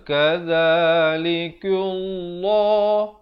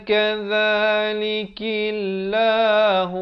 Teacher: kaf baris bawah dibaca nipis